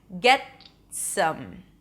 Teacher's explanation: Get some, not get some, get some. The T is also held or barely released when it's at the end of the word